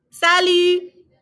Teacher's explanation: Notice we're not pronouncing the T on salut